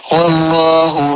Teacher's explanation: اللہ کا نام سے پہلے زبر ہے، اللہ کے نام کو پر اور جلالت کے ساتھ پڑھیں گے